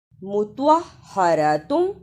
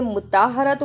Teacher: فیہا مطہرۃ، اسے مطہرۃ نہیں پڑھنا، توا کی جگہ پر تا کی آواز نہیں آنی چاہیے